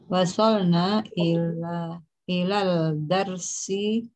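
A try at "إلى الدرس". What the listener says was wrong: Ila ad-darsi. Kan dal itu harf syamsiyah. Dal dan ra itu wasalna ila ad-darsi ar-rabi'. Wasalna ila ad-darsi ar-rabi'. Dua-duanya syamsiyah, dal dan ra.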